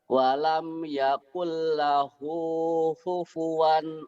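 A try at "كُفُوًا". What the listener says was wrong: Ku, kufuan. Kedengarannya tadi kayak hupuan, kaknya orang Jawa, kaknya ke H. Kufuan, ayo lagi.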